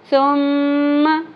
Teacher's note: मीम मुशद्दद गुन्ना होगा, ज़बर को ज़्यादा नहीं खींचना और सा 3 नुक्तों वाली सा को नरमी से पढ़ना है।